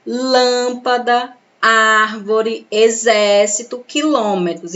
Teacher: são as palavras em que a sílaba tônica é a antepenúltima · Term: proparoxítonas